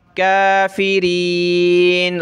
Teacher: रा को पतला करेंगे क्योंकि इस पे ज़ेर है